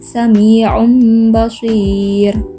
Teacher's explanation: Contoh yang kedua, sami'um basir, terdapat dhammatain bertemu dengan huruf ba. Cara membacanya, melafalkan dhammatain menjadi mim disukun. Sami'um basir. · Cara membacanya, melafalkan nun disukun menjadi mim disukun.